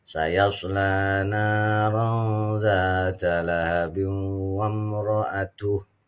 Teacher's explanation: kalau kita baca wasol di sini ada tanwin ketemu waw. Itu namanya idgham bi gunnah.